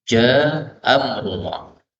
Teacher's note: Ini A ketemu A, maka bisa dihapus satu menjadi Ja'a amrullah.